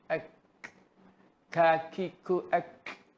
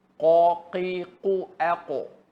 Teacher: kaf ni hukum mahmus. Ada sifat dia mahmus keluar angin.